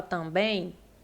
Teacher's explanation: quando você fala também esse M ele nasaliza o a